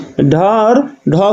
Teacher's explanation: ड और ढ को मूर्धन्य व्यंजन बोला जाता है।